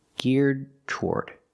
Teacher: When you link the D in geared and the T in toward, they go together. You don't separate them. · It's not geared toward, it's geared toward. You do a stop D and then release the T.